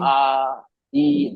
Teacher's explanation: तो ये हम जो खींचते हैं ना, एलोंगेट जो करते हैं, इसको खींचते हैं आवाज को, जी आ ई, दो से लेकर छह हरकत तक